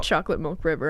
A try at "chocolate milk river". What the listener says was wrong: Wait, you just said it. You said mulk. You say mulk. You do. You just said it.